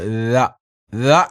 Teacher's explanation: ആയിക്കൊണ്ട് ദ ദ എന്ന ഉച്ചാരണം എങ്ങനെയാ വരുന്നത് ദാലിന്റെ ഉച്ചാരണ സ്ഥാനം എവിടെയാണ് നമ്മുടെ നാവിന്റെ അറ്റവും അതുപോലെതന്നെ മേൽപ്പല്ലിന്റെ താഴ്ഭാഗവും ചേർന്ന് നിൽക്കുന്നിടത്താണ് ദാലിന്റെ ഉച്ചാരണം